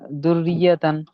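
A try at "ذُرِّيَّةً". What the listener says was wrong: দুর্রিয়াতান, মাশাআল্লাহ।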